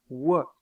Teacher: la masse de la langue est en arrière. Son dos est relevé, mais sa masse est en arrière. Et les lèvres sont arrondies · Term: semi-consonne vélaire arrondie